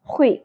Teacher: ٹھیک ہے. خوئی, خو پر ہوگا اور خراش بھی ہوگی